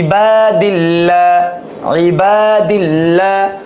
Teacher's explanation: লা লা লামটাকে বারিক করে পড়তে হবে